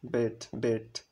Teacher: আর এই ব্যাট বেট বেট শব্দের উচ্চারণ করার সময় আমাদের জিহ্বার অবস্থান দেখো, এটা একদম মিডলে থাকে, তাই এটা হচ্ছে মিড ভাওয়ালস।